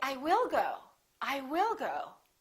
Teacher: there's a special reason why you're saying will. You're kind of emphasizing or disagreeing with what I'm saying.